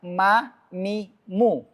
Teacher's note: Karena makhraj mim itu di bibir. Bukan di hidung, di bibir.